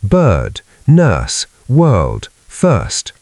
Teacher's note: Keep the nurse vowel smooth without a strong R